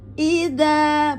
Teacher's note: za ada di ujung lidah dengan ujung gigi atas.